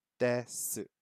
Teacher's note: it changes from more of a T sound to more of a D sound